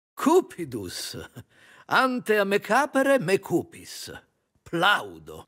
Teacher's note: he isn't observing phonemic vowel length